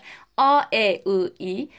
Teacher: bakın söylerken bile Siz aradaki farkı hissediyorsunuz dur düz ünlülerimiz yani söylerken Ağzımızın ve dudaklarımızın daha düz bir hal aldı